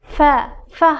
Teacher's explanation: tepa tishimizni ostki lablarimizning ichki qismiga tekizib fa, fa harfini talaffuz qilamiz